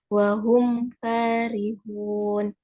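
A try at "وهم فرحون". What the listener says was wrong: Pendek, farihun.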